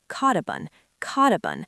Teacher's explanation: The T at the end of caught connects directly to the U at the start of up. And the P in up connects right to the O in on. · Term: linking